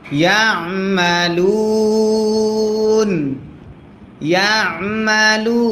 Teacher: মাদ্দে আসলির বামে আরজি সাকিন যদি হয় তিন আলিফ টানতে হয় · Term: মাদ্দে আরজি